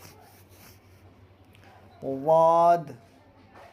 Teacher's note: یہ حروف مستعلیہ میں سے ہے، یعنی ہر حال میں یہ حرف پر ہوگا۔ واد، کنارہ زبان داڑھ سے مل کر واد ادا ہوتا ہے۔